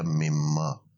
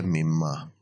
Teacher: جاتا ہے۔ یہ من ما تھا تو من ما سے وہ نون اور میم کا مخرج بہت قریب ہے تو اس کو میم میں تبدیل کر دیا اور پھر بن گیا مما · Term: ادغام